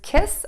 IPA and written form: kɪs (KISS)